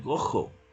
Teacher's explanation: se reemplaza esa vibrante múltiple por el sonido de la J